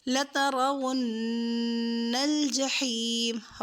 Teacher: وقف میں لترون الجحیم، را کو پر کریں گے